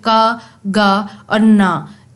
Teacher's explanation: sound produce you होते हैं ये वेलर साउंड्स होते हैं क्योंकि बैक ऑफ द टंग जो है वो सॉफ्ट पैलेट से पीछे वाले पैलेट से टकरा रही है